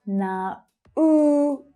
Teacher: Three syllables here and the second one is stressed.